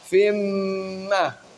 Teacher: Karena tanwin bertemu dengan salah satu huruf idgham bi ghunnah, yaitu mim. Dibaca masuk ke dalam huruf mim, disertai dengan dengung, ditahan yang lama.